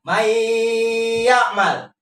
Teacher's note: Maka bacaannya adalah didengungkan. Gak boleh dibaca man ya'mal. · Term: idgham